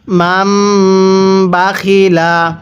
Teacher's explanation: এই মিমটিকে আপনারা পূর্বের মিমের সাথে লাগিয়ে গুন্নাহ করে পড়বেন। অবশ্যই এই ছোট্ট মিম দেখলে গুন্নাহ করে পড়বেন, কারণ এই মিম সাকিনের পরে বা থাকলে সেখানে আমাদের গুন্নাহ করে পড়তে হয়।